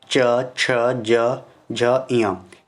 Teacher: जीभ का जो मध्य भाग है वह हमारे तालु से स्पर्श किया, तालु के मध्य भाग पे · इसमें आपका तालु स्पर्श हो रहा है किससे, आपके जीवा से। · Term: तालव्य